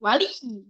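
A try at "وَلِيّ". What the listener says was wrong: Dinabrak ditekan. Itu belum menekan tuh. Wali meninggi.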